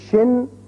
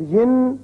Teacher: اب دو زیر تنوین، شین دو زیر شن، شین دو زیر شن، ایک زیر ہو تو شین زیر شی ہوتا ہے لیکن دو زیریں ہو جائیں تو پھر شن اس کو نون ساکن کے ساتھ ملا کر جیسے پڑھا جائے